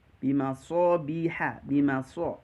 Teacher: perhatikan sodnya, isti'la as-safir ya, al-hams ya, isti'la. Kemudian dia disertai suara desis, kemudian tebal